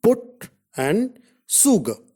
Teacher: Short oo is a back rounded vowel just above half close position.